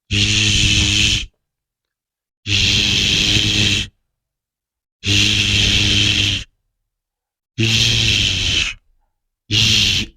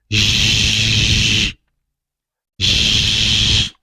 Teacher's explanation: It's a voiced sound and that's the reason it's vibrating. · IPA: /ʒ/